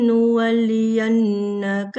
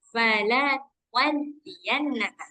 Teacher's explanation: Nu di sini nggak ada gunnah, nggak ada tasydid, jadi nggak boleh didengungkan. Falanu, biasa bacanya.